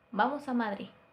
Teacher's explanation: no llega a terminar de pronunciar la letra d por completo se queda en en un Madrid y este sería el error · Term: debilitamiento de la d